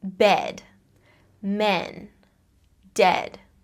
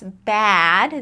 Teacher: the main thing that changes between these two vowel sounds in words like bed versus bad is our jaw position